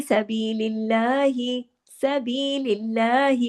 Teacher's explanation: अब देखिए तमाम बारीक हुरूफ है, और अल्लाह का नाम आने से पहले जेर है, तो यहाँ पर लाम जलाला नहीं होगा, लाम हैवी नहीं होगा